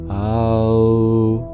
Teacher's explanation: We're technically still saying ah. The only difference is that we've changed the shape of our lips.